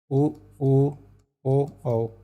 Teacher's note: तो इसमें हमारे होठ वृत्त के समान खुलेंगे। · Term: वृत्ताकार स्वर, वृत्ताकार